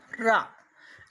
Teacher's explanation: र इसको हम प्रकंपित लुंठित भी कहते हैं।